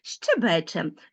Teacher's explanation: ненаголошений голосний який звучить нечітко має призвук